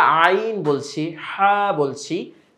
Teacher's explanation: হলকের মধ্যখান হইতে উচ্চারিত হয় আইন, হা। তো যখন আমরা আইন বলছি, হা বলছি, দেখুন ভিতর থেকে কিন্তু গলায় একটা চাপ লাগছে।